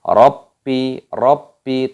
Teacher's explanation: Lamnya dipanjangkan, ada tanda alifnya. Rabbi, rabbi tasdid ditekan suaranya.